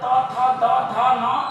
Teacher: दंत होते हैं जिसमें त वर्ग में आता है त, थ, द, ध, न, जीभ प्लस दांतों का स्पर्श करके बोलते हैं